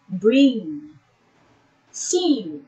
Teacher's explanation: When articulating this sound, the oral passage is blocked by pressing the back of your tongue against the soft palate.